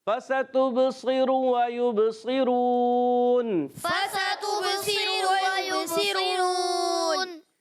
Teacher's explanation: واو ساکن سے پہلے پیش واو مدہ ہے، ایک الف کھینچ کر ادا کریں گے. مگر یہاں پر را کو پر بھی رکھنا ہے اور یہاں وقف کریں گے.